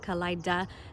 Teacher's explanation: The D is a stop in the forward part of the palate, Kalaida, and then the M with the lips, and the N again is with the tongue behind the teeth up against the palate.